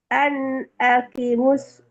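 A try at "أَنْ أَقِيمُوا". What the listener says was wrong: Panjang. Q-nya panjang. Tumben sekarang bacanya salah-salah.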